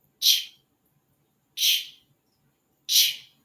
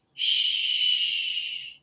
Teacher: CH is one short puff of air, where SH can be a long sound with a long puff of air.